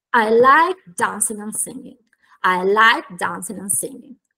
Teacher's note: Sostanzialmente qui abbiamo una frase molto semplice con quattro content words, quindi quattro parole che portano significato e che in quanto tali vengono pronunciate più forte, ed una function words and, che viene sostanzialmente smanciucchiata, si sente a malapena